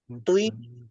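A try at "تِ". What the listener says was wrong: It, toi-nya, auto, it, toi, utu. Jangan pakai bibir, jangan tui, jangan. It, toi, pakai lidah. Lidahnya ngangkat, jadi it, toi, ya.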